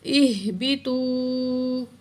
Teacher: واو ساکن ہے، اس سے پہلے پیش واو مدہ ایک الف کی مقدار کھینچ کر پڑھیں گے واو کو